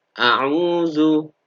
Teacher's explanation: cara membacanya dibaca panjang 2 harokat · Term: mad tobi'i